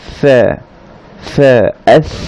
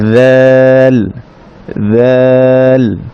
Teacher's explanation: সাতে আমরা বাতাস বের করব, বাতাস সহ উচ্চারণ হবে সা শব্দটি, সা হারফটি, এবং জাল শব্দটিতে কিন্তু বাতাস বের হবে না।